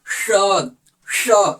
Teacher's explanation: जब हम इस स का उच्चारण करेंगे ना तो जीभ को तालु के पास लेके जाना है। तालु मतलब जीभ आपका ऊपर की तरफ जाएगा।